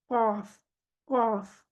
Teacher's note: ये अक्सा लिसान जो है, जुबान की जड़, ये हिस्सा जो है ये ऊपर उठा हुआ है जुबान के तालु की तरफ। कॉफ, कॉफ, जुबान का पिछला हिस्सा, जुबान की जड़ ऊपर के तालु की तरफ उठी हुई है, इसलिए ये हरूफ मुस्तालिया में आता है।